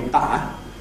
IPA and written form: ˈbʌʔə (butter)